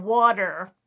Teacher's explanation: I can do what we call a flap T